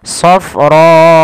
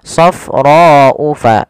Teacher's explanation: Hamzah maka dia berubah menjadi empat harakat atau Li harakat harakat maka ketika melafalkannya panjangkan rnya empat harakat jangan dikurangi